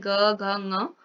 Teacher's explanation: ग घ जब हम बोल रहे हैं ग घ ङ, तो इसमें क्या हो रहा है, श्वास नलिकाओं में कंपन हो रहा है, तो ये क्या हो जाएंगे, सघोष हो जाएंगे।